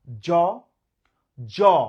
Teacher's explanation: দেখেন জোরে একটা ঘর্ষণ লাগছে, সেই কারণে এটা ঘোষ ধ্বনি